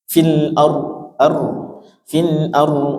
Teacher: Fil ardi ra-nya tafkhim, sukun didahului fathah atau dhammah.